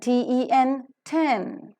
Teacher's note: a complete closure is formed in the oral cavity by a firm contact made between the tip and blade of the tongue and the teeth Ridge